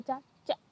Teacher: तालु से। जैसे हम बोलते हैं चा चा, तो फिर तालु से हुआ है